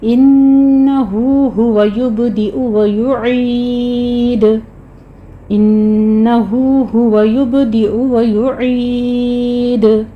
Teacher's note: انہو ہوا یبدئ و یعید، ان پہ غنہ کریں گے، ہو کو آپ نے 2 کاؤنٹ کرنا ہے، یبدئ میں با کے پر قلقلہ کریں گے